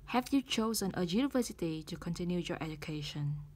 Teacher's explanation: Bắt đầu với từ have. Ngữ điệu phần này sẽ đi lên.